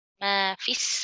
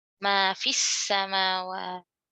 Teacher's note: Ini syamsiah ya, jadi langsung ke sin. Ma fis melebur lamnya ya, lamnya nggak dibaca.